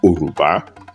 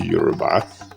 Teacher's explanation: the evolution from Oruba to Yorùbá, that is substitution of the initial glottal stop with the consonant Y, is apparently a feature of the classical Arabic dialects of the central western Sudan, where the Mali Empire belongs.